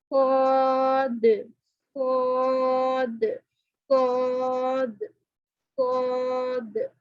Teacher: تو جیسا کہ صاد کو آپ کو بتایا گیا تھا کہ موٹے والے حروف کیسے پڑے جاتے ہیں, زبان کی جڑ اوپر کو اٹھتی ہے اور یہ موٹا پڑے جاتے ہیں آٹومیٹکلی. صاد زبان کی جو جڑ ہے وہ اوپر تالو سے تھوڑی سی اوپر کو اٹھے گی تو یہ موٹا پڑا جائے گا